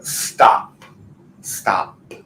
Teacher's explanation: no vibration it's just air on that final sound of the P